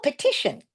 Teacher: Let's flex the e to a schwa.